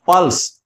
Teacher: प के ऊपर बलाघात है, प लंबा